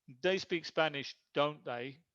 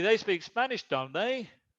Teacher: With rising intonation, that's more like a real question.